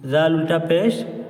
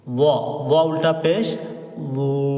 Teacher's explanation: जाल की आवाज पतली और बारीक होती है और व की आवाज मोटी होती है